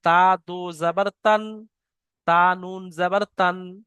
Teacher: তানমিন ও নুন সাকিনের আওয়াজ একই রকম হয়, অর্থাৎ নাক থেকে হয়